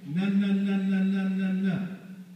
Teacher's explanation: The N is a voiced apical-alveolar nasal.